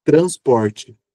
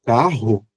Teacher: esse R da sílaba T r a N S é muito rápido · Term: TEP